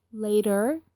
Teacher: American people say later the T sounds like D